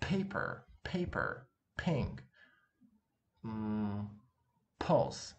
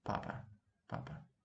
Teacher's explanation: It's just, again, plain, papa, okay? No aspiration at all.